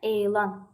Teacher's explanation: Elan uzanma bir də, vurğu ikinci hecədə olur.